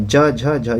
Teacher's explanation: ज झ झ ये तालव्य है